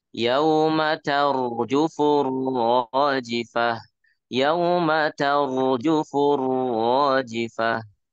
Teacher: Ro itu sifatnya tengah-tengah antara syiddah dan rokhawah. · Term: tawasud